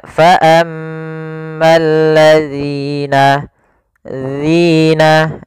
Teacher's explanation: ujung lidah kita tempelkan dengan gigi seri atas, agak kita keluarkan sedikit sehingga berbunyi zi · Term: huruf zal